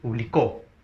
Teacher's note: publicó, en la co lleva la mayor fuerza de voz, ¿no? Aparece muy bien, ahí está, en la última sílaba.